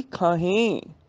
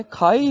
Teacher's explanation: ਖਾਹੇ ਨਾਸਕੀ ਉਚਾਰਨ ਹੈ, ਖਾਏ ਨਹੀਂ ਬੋਲਣਾ। ਖਾਏ ਉਦੋਂ ਬੋਲਣਾ ਜਦੋਂ ਖੱਖੇ ਨੂੰ ਕੰਨਾ ਤੇ ਈੜੀ ਨੂੰ ਸਿਆਰੀ ਹੋਏਗੀ, ਖਾਏ।